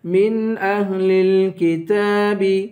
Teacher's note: تا پر کھڑا زبر ہے، اس تا کو بھی ایک الف کے برابر کھینچ کر پڑھیں گے